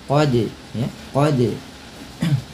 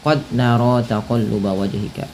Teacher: Pantulkan bunyi suara huruf dal ketika ia berharakat sukun. Pada lafal qad ada huruf dal yang berharakat sukun. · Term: qalqalah